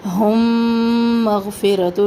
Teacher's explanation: میم ساکن کے بعد میم ادغام شفوی